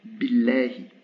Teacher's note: Vous vous rappelez, je vous avais dit dans une leçon que quand le mot Allah était précédé d'un son i, le lam n'était plus emphatique.